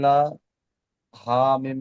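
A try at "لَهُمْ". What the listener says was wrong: লা টান হয়ে যাচ্ছে, লাহুম, লা টান হবে না, লাহুম। হুম একসঙ্গে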